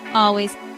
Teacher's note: It is a two-cllable word. Stress is on the first syllable.